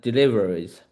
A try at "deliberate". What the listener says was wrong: So just slow it down a touch. Deliberate.